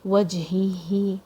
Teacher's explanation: jim has a qalqala, it has a bounce.